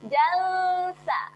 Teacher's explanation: Dijelirkan lidah kerana kita bersedia nak sebut huruf sa. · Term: dengung